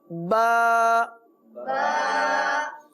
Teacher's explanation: ہونٹوں کے دو حصے ہیں، ایک حصہ جو باہر کی طرف رہتا ہے اس کو کہتے ہیں خشک حصہ، اور ایک حصہ اس سے تھوڑا سا منہ کی طرف اندر کی طرف ہے، یہ ہے تر حصہ. تو با دونوں ہونٹوں کے تر حصے سے ادا ہوتا ہے